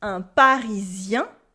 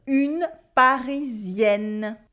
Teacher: And this is the case for all the nasal sounds that come before a vowel. They become 2 sounds and you can hear the N again.